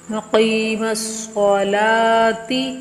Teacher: عین کو گلے سے حلق سے درمیانی حصے سے نکالیں گے · قاف کو بھی پور پڑھیں گے، تھوڑا سا لمبا کریں گے، اور صاد کو بھی پور یعنی موٹا کر کے پڑھیں گے